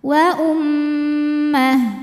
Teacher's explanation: mim tasdid dihukumi ghunah dibacanya didengungkan bunyi M tahan